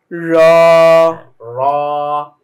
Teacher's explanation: জিহ্বার আগাটা গিয়ে ওর উল্টা পিঠটা সোজা তালুর উপরে লাগবে। তাহলে এইভাবে যদি আমরা উচ্চারণ করি তখন কিন্তু রটা একটু মোটা হবে এবং উচ্চারণটাও সুন্দর হবে।